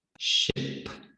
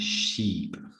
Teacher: In the middle, however, we have two different vowel sounds. Now, the I in this case is a short vowel sound, which sounds like I. So we have ship, and then in the second word, the double E's is going to come out as the long vowel sound, E.